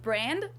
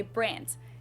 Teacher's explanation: Germans usually pronounce a d at the end of a word as a t